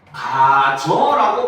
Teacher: 탈락해서 변화를 하는 거죠. 그래서 반모음이 탈락해서 발음이 되기도 한다는 겁니다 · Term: 반모음 탈락